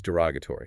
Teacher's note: Stress is on the r o g.